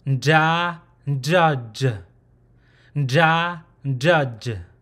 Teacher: So there's a nasal sound before the sound, the main sound, and so the main sound should come from behind the upper teeth gum where the tongue is at. So there's really no equivalent English word for this, but it's a mix of the word can and draw together really fast.